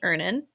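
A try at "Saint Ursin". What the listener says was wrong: Saint Urson. You're close. You said Ernin. Like earning money.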